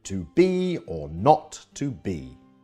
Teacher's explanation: am this two syllable foot is like a reverse trokey so the first syllable is unstressed and second is stressed as in to be or not to be Shakespeare's favorite meter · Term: I am